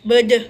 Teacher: Cara pengucapan ini mengangkat lidah bagian tengah sepertiga dari jarak terendah sampai tinggi.